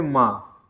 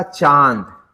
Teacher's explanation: वायु नाक और मुख दोनों से बाहर निकलती है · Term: अनुनासिक